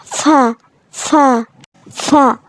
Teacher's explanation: নিচের ঠোঁটের পেট সামনের উপরের 2 দাঁতের আগার সাথে লাগিয়ে আমরা এটা উচ্চারণ করব।